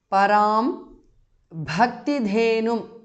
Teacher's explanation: Bha and dha are mahapranah.